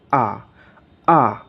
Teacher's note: কিন্তু ব্রিটিশরা এটাকে উচ্চারণ করে আ, আ। অর্থাৎ র উচ্চারণ করে না